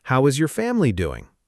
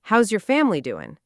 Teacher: The your shrinks down to yer and doing loses its final G sound.